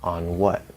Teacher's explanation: So you bring the tongue up, you bring the lips out, on what? And so you hold that N until the lips are out, and then you release the N and open the W. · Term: stacking effect